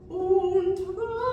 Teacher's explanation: basically you've got the N from und, the T sound from und, and the flipped R. And they're kind of all right in a row.